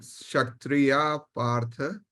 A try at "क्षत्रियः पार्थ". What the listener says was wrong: Kshatriyah partha. That visarga will not be kshatriya. Kshatriyah partha.